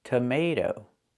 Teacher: The stress is on the second syllable. So when you look at that T-O at the end, change the T to a fast T.